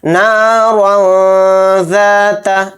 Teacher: را کے اوپر 2 زبر ہے، را کو موٹا پڑھیں گے۔ ذال کے ساتھ الف مدہ ہے تو ذال الف زبر ذا کو یہاں پر تھوڑا کھینچیں گے۔ را کے اوپر تنوین ہے، تنوین کے بعد ذال آ رہا ہے، ذال حروف اخفا کے حروف میں سے ہے، اس لیے را 2 زبر رن میں اخفا کریں گے، یہاں پر نارا ذات اس طرح سے اخفا کریں گے۔